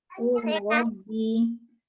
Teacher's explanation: lam sukun diidghamkan ke dalam ro dengan sempurna atau idgham kamil, yakni menjadi huruf kedua yang ditasydid